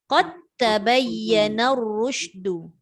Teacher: Tapi sebab dal bertemu dengan ta yang sama tempat keluar, maka dia jadi ta terus. Jangan dilantunkan qad tabai.